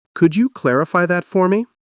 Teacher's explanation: It's not demanding, it's requesting. Your voice should rise slightly at clarify and fall softly at the end.